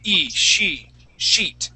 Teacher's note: if you use the short I sound in pronouncing that E, it's going to sound like a cuss word. It's going to sound like you're saying mierda.